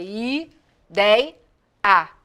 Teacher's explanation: a sílaba mais forte é o dei que é faz da palavra ser uma paroxítona e terminado em